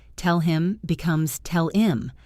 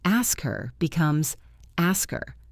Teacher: the H just disappears. It blends into the previous word.